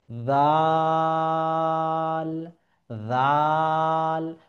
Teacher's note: জাল উচ্চারণের ক্ষেত্রে এই যে জিহ্বা, এটাকে আমাকে দাঁতের গোড়ালিতে লাগাতে হবে, সামনের দাঁত।